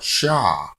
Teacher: I want to say Shah as opposed to just Shh, okay? I need that ah. I don't want just Sh as SH.